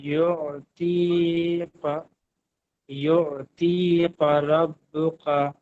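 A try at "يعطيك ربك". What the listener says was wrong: কাফ গুলো বড় কফ হয়ে যাচ্ছে। ইউ তি কা, কা কয়াকারে কা।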